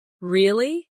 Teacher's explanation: when they are surprised, their voice goes up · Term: intonation